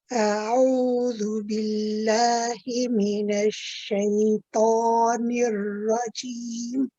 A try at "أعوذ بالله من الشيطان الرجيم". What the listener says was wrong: The rajim at the end, the second ra is better than the first ra. So the ra, when you say rajim, that one is okay. But the joining one, we need that one to be heavy too. So when you say a'udhu billahi minash shaitan, not nir.